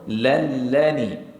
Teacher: berlakunya hukum idgham bila ghunah kita terus masukkan tanpa dengung